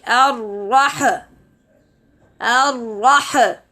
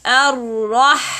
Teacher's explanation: It is not ar-rah. There is no qalqala on Ha. So we have to make the sound continuous.